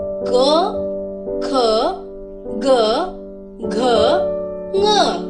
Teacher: इनके उच्चारण के समय स्वर कंठ से निकलता है, जैसे क, ख, ग, घ, ङ। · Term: कंठ ध्वनियां